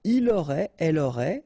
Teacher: final T not pronounced, so phonetically exactly the same form here.